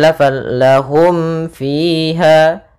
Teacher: lahum mim mati bertemu dengan fa, yaitu kita namakan dengan izhar syafawi kembali. Suara mimnya harus jelas dan tidak boleh ditahan.